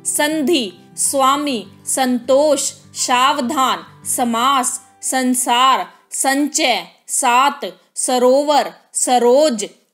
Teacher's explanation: स के उच्चारण में जिह्वा दांत को स्पर्श करती है। अतएव स दंत्य वर्ण है।